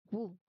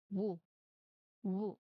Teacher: tight round lips make that quick gliding movement. So if you don't use your lips strongly the sound is wrong.